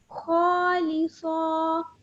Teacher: खौ भी मोटा है, सौद भी मोटा है।